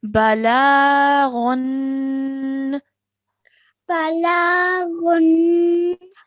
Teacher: the lam has a vertical fatha, so we have to stretch for 2 seconds